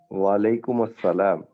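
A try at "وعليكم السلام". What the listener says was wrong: वालेकुम अस्सलाम नहीं बोलना, वालेकुमुस्सलाम, मीम पेश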